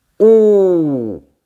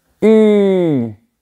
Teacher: On dit OU avec la langue en arrière. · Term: le son OU